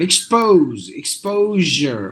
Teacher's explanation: Expose, exposure with a j sound, not exposure with a sh sound. No, j, exposure.